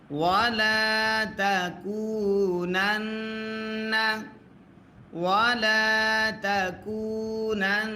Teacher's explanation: নুনে যদি তাসদিদ হয় গুন্না করা ওয়াজিব হয়